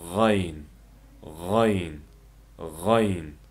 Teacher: Talaffuzi Uyg'ur tilidagi g'i harfi bilan o'xshash kanayning yuqori qismidan chiqadi. G'ayn g'ayn, ya'ni xa harfiga o'xshash kanayning yuqori qismidan chiqadi.